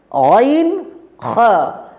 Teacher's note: এই দুটি অক্ষর যখন আমরা উচ্চারণ করব তখন জিহবার গোড়া এবং আওয়াজটি উপরের দিকে উঠবে জিহবার গোড়া আর আওয়াজটি উপরের দিকে উঠবে প্রিয় বন্ধুরা খা আর